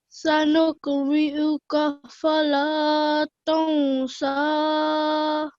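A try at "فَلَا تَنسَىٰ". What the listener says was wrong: Yeah, just 2 seconds. That went a bit into 3. So just fala dansa.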